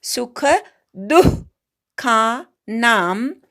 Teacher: दूच्या विसर्गाचा अर्धा उच्चार दू म्हणायचा आणि पोटातनं जोरात हवा सोडून द्यायची